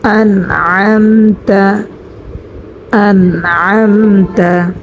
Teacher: প্রথমটা অর্থাৎ আন হয়েছে নুন সাকিনের ইজহার, পরেরটা হয়েছে মিম সাকিনের ইজহার, অর্থাৎ মিম সাকিনের বামে বা আসে নাই এবং মিম আসে নাই, সেজন্য এখানে কোনো গুন্না হবে না, তা আসার কারণে মিম সাকিনে ইজহার হবে। অর্থাৎ আন এখানেও কোনো গুন্না হবে না, আম এখানেও কোনো গুন্না করব না, দুটোটাই গুন্না ছাড়া হবে।